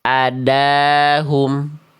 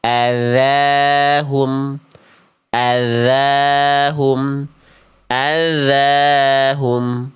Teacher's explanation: makhrajnya ujung lidah disentuhkan ke ujung gigi seri atas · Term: huruf zal